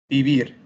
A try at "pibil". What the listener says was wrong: Empieza con una P.